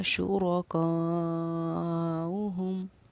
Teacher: پڑھنے کا طریقہ اس کو یہ کہ چار الف کی مقدار کے برابر ہم اس کو کھینچ کر پڑھتے ہیں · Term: مد متصل